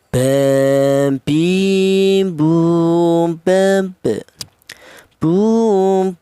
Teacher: Huruf ba ini keluarnya huruf berasal dari kedua bibir yang rapat ya.